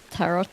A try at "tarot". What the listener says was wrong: It's pronounced tarot, the T is silent.